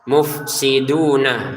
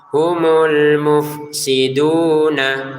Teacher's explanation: Mufsiduna ini ada wawu sebelumnya ada dhammah dibaca 2 harokat.